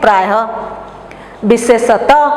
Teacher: ह सघोष होता है, लेकिन विसर्ग क्या है, ह का अघोष रूप है। अगर इसको हम उपसर्ग के अंत में या शब्द के अंत में व्यवहार करेंगे तो उसको अघोष के रूप में व्यवहार करेंगे।